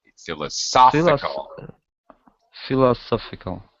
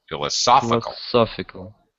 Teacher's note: Yeah, it has the stress. The primary stress is in this middle syllable.